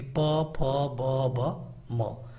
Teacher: जिनको बोलने के लिए दोनों होठों का प्रयोग करना पड़े इनको हम कहते हैं ओष्ठ